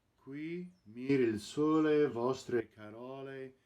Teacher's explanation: the word sole, closed O, correctly rhyming with the open O of carole. It's called a Sicilian rhyme.